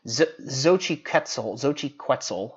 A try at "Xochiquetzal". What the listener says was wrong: Don't you think the X is pronounced like a H, like Mexico? Well, it's not Mexico.